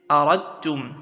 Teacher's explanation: So you say aradtum, that is, you do not pronounce the dal, you only pronounce, you insert the dal into ta, giving it shadda, and you pronounce the ta only. This is how you recite idgham.